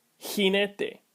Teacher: the Spanish J is like a raspy English H